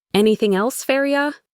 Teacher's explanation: The G at the end of anything almost disappears, and the words just flow together.